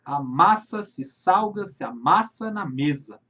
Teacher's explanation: Então temos a repetição desse A mais forte, a repetição de sons vocálicos, muitas vezes a vogal tônica. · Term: assonância